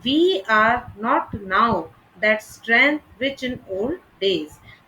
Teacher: Line 66, for instance, describes how Ulysses has grown weaker with age, and almost every syllable could be read as stressed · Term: spondees